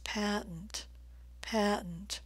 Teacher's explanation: I'm stressing the first vowel sound with a nice I as in black sound the T's are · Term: a as in black